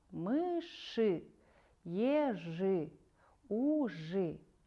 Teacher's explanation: когда произносишь слова в сочетаниях жи-ши, слышится звук «ы»